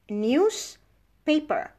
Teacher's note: now we devoice the Z and becomes an S. Why? Because the P is voiceless.